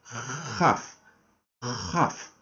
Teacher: el sonido es el sonido J un sonido que sale de la garganta